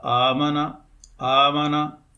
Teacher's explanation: یہ دوسرا حمزہ جو ساکن ہے اس کو حرف مدہ سے تبدیل کریں گے تو یہ بن جائے گا آمنہ آمنہ، تو یہ ابدال سے پڑھا جائے گا۔